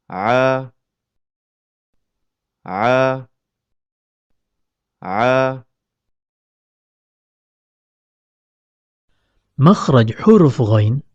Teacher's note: tatkala melafazkan huruf Ain epiglotis merapat ke dinding tenggorokan sehingga mempersempit keluarnya huruf